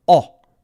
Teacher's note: in English the sound is O and it's different so the tongue is further back in English